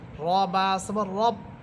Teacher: মোটা হবে, কারণ র হরফের উপরে আছে জবর, এবং র বাকে গিয়ে ধরবে